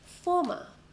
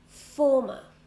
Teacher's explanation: Former, 2 syllables, and we stress the first one.